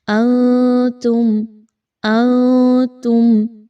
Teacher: یہاں پر غنہ نہیں کرنا، آواز کو بڑا کلیئر رکھنا ہے اور میم پر کسی طرح کا رکنا نہیں ہے